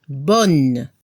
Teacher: Al femenino se debe escuchar a la N final y no se pronuncia la E.